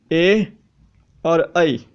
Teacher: कंठ से भी आवाज आ रही है और तालू से भी आवाज आ रही है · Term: कंठ तालू